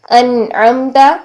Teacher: تو وہ کیا ہے، جیسے یہاں پر دیکھیے انعمت، عین آ رہا ہے، نون ساکن کے بعد عین آ رہا ہے جو کہ حروف حلقی میں سے ہے، یہ وسط حلق سے ادا ہوتا ہے